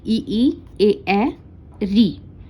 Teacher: ई, ए, री, ये अग्र स्वर हैं, अग्र जिह्वा से बोले जाते हैं।